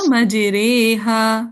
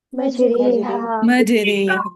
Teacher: مجراہا کلمہ میں، تو انہوں نے اس کو امالہ کے ساتھ پڑھ دیا